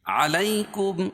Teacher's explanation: میم ساکن کے بعد میم آئے تو میم کا میم میں ادغام ہوگا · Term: ادغام شفوی